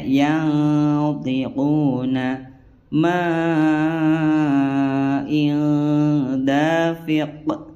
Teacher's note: membaca nun sukun atau huruf bertanwin dengan samar disertai dengan gunnah atau dengung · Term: ikhfa hakiki